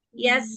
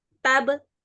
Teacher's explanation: pada Sin aliran suaranya lebih panjang lalu pada ba tidak ada aliran suara